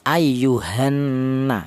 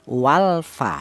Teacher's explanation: lam matinya ini hilang, yaitu cara bacanya itu tidak kebaca, langsung lam matinya ini langsung dilebur ke huruf nun ini. Itu namanya idgham.